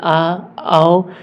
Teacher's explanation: आ और औ ऐसे दो स्वर हैं जिनका उच्चारण करने के लिए हमें मुह को पूरा खोलना पड़ता है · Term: विवृत स्वर